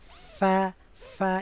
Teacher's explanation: হবে নিচের ঠোঁটের পেট সামনে উপরে দুই দাঁতের আগার সঙ্গে লাগাইয়া এই ঠোঁটের সাথে আপনার উপরে দুই দাঁতটা লাগবে কেমন ফা ফা এরকম বাতাস বের হবে